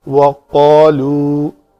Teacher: قاف پر حروف میں سے ہے، اس کے بعد والا الف بھی پر پڑھا جائے گا